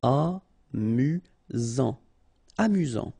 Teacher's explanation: You've got only one S here between the vowels, so it's really this Z sound.